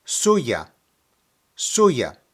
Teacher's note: when pronouncing it put the emphasis on the first syllable